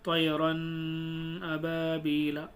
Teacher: آپ نے دیکھا ہوگا کبھی امام صاحب کو نماز پڑھاتے ہوئے یا کسی کو قرآن پڑھتے ہوئے تو بیچ میں غنہ کی آواز ناک میں پڑھتے ہیں، طیرن ابابیلا، اس طریقے سے۔